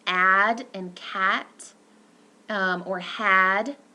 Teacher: That's a front low lax, so our tongue is not very tight, unrounded vowel.